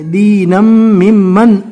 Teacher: نون کے دو زبر کو میم سے ملانا ہے اور دو زبر کو جب ملا کر پڑھیں گے تشدید کے ساتھ تو ایک ہی زبر پڑھا جائے گا. دینم مم من اس طرح پڑھنا ہے.